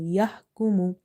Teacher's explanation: Ha is from the middle of the throat, exactly from the middle of the throat.